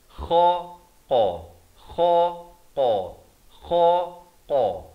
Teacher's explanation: huruf kha di hujung kerongkong, qaf pula di pangkal lidah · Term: makhraj huruf